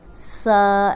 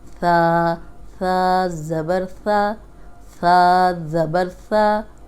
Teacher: سیٹی کی آواز نہیں آئے، یہ ساؤنڈ آئی تو سین بن جائے گا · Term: نرم حرف